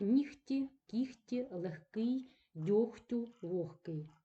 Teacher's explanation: у нас буде буде звук г вимовлятися як х Тобто повністю оглушуватися